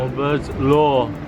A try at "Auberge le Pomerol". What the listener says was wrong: Not lo, le. Le.